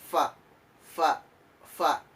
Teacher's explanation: tempat keluar hurufnya yaitu di ujung gigi depan bertemu dengan bibir bawah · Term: huruf fa